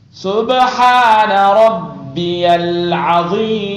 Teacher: با کو جھٹکا، ہا نرم اور شد 2 بار، عین ضاد مد دینوں کا خیال رکھنا.